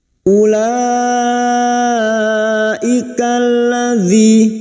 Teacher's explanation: ikalladzi masuk pada alif lam syamsiyah atau idgham syamsiyah. Kalladzi kasrah bertemu ya sukun 2 harakat mad tabi'i.